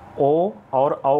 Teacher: ओ और औ का उच्चारण स्थान होता है कंठोष्ठ से।